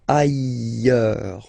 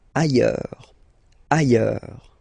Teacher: final S not pronounced, and then you've got this y sound